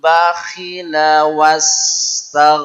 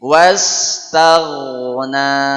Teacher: Huruf ghain bergetar. Bukan tag ya.